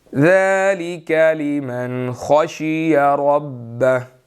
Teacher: تو خا موٹا ہے اور ربہ کا را بھی موٹا ہے